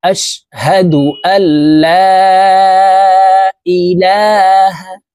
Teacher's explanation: লাম কে তিন আলিফ টেনে পড়তে হবে